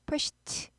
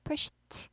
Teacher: 쉬가 무성음이니까 드는 원래 유성음이 드 유성음이지만 무성음화 같이 끼리끼리 놀아야지 발음하기 편하기 때문에 pushed 무성음화 됩니다.